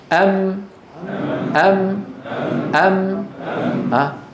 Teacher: بانطباق الشفتين ويصاحب ذلك غنه من الخيشوم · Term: الميم